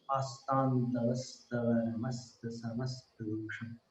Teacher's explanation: आस्तान में अनुस्वार को तव वाले तव में मिलाना।